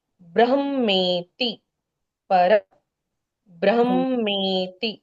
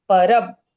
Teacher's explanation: क्योंकि ब्र आधा ब प्लस र बना है तो उस आधे ब को पहले उच्चारित करना होगा। कैसे? परब और फिर पूरा ब्र बोलना है।